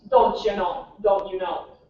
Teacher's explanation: in Minnesota, our stereotype is that we elongate our O's in our vowels